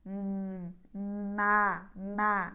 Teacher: saat harakat nya kita ucapkan suara sudah bersih ya tidak keluar dari hidung yang keluar dari hidung saat mempersiapkan huruf nunnya na na bersih